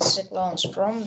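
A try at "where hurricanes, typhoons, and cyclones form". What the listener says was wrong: They where cyclones form, not from.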